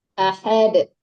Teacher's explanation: Karena dal itu kalau diwakafkan, kalau kita berhenti ada pantulan dalnya, ada qalaqalahnya gitu